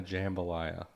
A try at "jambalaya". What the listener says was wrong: It's not jambalaya. It's jambalaya. No, you put the wrong emphasis on the wrong syllable. No, it's jambalaya, and I think